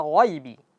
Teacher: Jadi g sifatnya istila'la. Jadi ditebalin. Jadi ditebalkan ketika kita baca g jangan sampai kita baca ee kita baca jadi gha jangan dibaca alal alal ghaibi.